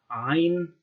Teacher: a voiced pharyngeal fricative or a kind of pharyngeal approximant